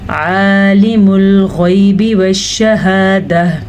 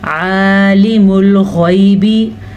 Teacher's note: आइन के मखरज का ख़ास ध्यान रखना है और ग़ैन को पुर पढ़ना है क्योंकि ग़ैन हुरूफ़े मुस्तालिया में से है।